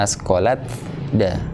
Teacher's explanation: Hamasnya sifatnya hilang, masuk semuanya totalitas ke huruf da. Jadi seperti nggak ada. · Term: idgham